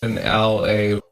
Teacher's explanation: the L and A could have been linked together to pronounce the LA sound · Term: connected sounds